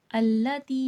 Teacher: یا مدہ یا ساکن سے پہلے زیر ہے، تھوڑا کھینچ کے پڑھا جائے گا